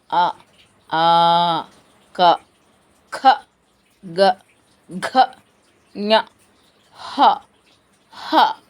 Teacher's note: కంఠములు అంటే కంఠము నుండి పుట్టినవి